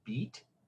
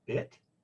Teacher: the difference between the E in beat, which is a long vowel in our system, and the I in bit is not length of the time that you say it, it's qualitatively different.